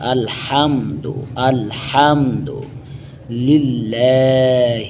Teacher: ہا کو حروف حلقی میں سے آئے، حلق سے ادا کیا جائے گا